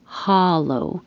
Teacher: The vowel is ah. So the jaw is very open. The lips are straight.